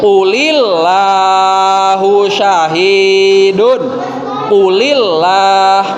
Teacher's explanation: Itu harus dibaca tipis karena lafadz Allahnya dibaca tipis karena didahului oleh harokat kasroh.